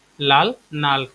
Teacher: কামরূপীতে ল ন কিংবা ন ল হয়ে যায়, এটা একটা গুরুত্বপূর্ণ বৈশিষ্ট্য কামরূপীর।